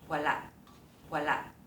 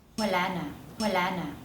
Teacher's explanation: 有喉塞音的这几个例子，以及喉塞音跟后面一个词连在一起的时候，那个喉塞音不见了，而会变成长音